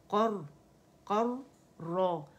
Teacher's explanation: کیونکہ ہمارے پاس را مشدد ہے نا تو اس کو جماؤ دینا